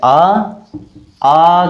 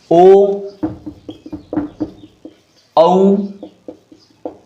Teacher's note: जीभ का पिछला हिस्सा काम में आएगा, जोर पड़ेगा उसमें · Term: पश्च स्वर